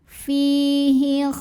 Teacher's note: Cara bacanya dipanjangkan fi-nya 2 harokat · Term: mad tabi'i